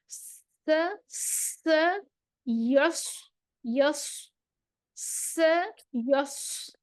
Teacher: स्वाद में जुबान के पिछले हिस्से को उठा देंगे।